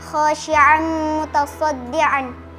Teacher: Karena fathatain bertemu dengan huruf mim dibaca dengung. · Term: idghamunah